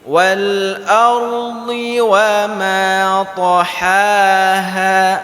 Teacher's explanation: ketika dhad lidah kita ke samping, tapi ketika ta lidah kita di depan.